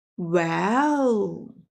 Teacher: The third tone, falling down and then rising up